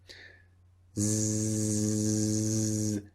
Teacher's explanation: a b buzzing and touch your throat again z z z now you can feel a vibration when you make the sound z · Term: voiced